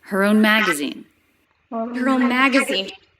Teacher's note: She pronounces a light H sound, even though it's unstressed.